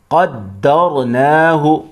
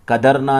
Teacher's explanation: والقمر قدرناہ، قدرنا نہیں ہے، دال کو ڈبل پڑھیں گے اور پھر دال کو ملائیں گے را کے ساتھ